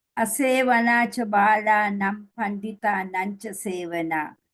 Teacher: Very short, unstressed cha.